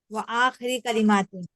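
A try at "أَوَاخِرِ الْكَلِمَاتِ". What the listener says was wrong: आ वा दोनों को बोले अवाखिरिल कलिमाती, ठीक है ना।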